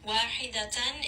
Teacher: واحدة, if you are stopping here, you are going to add a ta marbuta. Make sure you do give it a little bit of hams. We don't want to drop this ha. So make sure that you do give it a little bit of air.